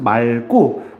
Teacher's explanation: 기억으로 시작하는 어미가 오면은 대표음이 리을이 발음이 됩니다